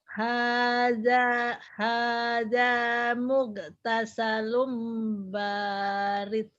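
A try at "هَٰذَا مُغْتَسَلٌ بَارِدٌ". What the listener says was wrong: De, kol-kolannya nggak keluar. Hadza mughtasalun barid. Barid.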